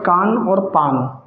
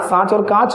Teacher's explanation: अनुनासिक ही नाक और मुख से बोला जाता है। निर्नुनासिक केवल मुख से बोला जाएगा, नाक से नहीं बोला जाएगा।